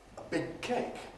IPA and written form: ə ˈbɪg̚ ˈkeɪk (a big cake)